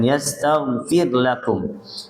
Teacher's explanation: rnya ini ditipiskan karena harakat sebelumnya kasrah